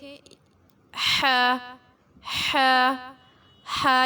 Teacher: وسط الحلق ح اور عین، یہ حلق کے درمیان والے حصے کو کہا جاتا ہے، مڈل آف دا تھاٹ، اور یہاں سے 2 حروف ادا ہوتے ہیں، اور یہ جو آپ کے سامنے 6 حروف نظر آ رہے ہیں ان کو حروف حلقی کہا جاتا ہے۔